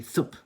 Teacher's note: you're doing basically like a TH sound and a B sound at the same time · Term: TH/B sound